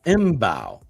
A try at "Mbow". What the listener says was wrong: It's a silent M. It's Marcus Bow. Bow. Bow, like Dwayne Bow.